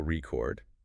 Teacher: Stress the second syllable, record, and it's the verb, the action of recording something. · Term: word stress